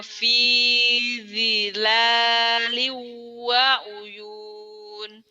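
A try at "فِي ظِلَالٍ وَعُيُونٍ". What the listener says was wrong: Innal muttaqina fi zilalin wa uyun. Zila, bukan dila ya, bukan di,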